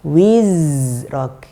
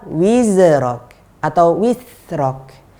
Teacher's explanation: Contoh yang lain, huruf zai. Huruf zai ketika sukun dia punya aliran yang paling panjang